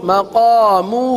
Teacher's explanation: مقامہ ہا کو ایک الف تک کھینچ کے پڑھیں گے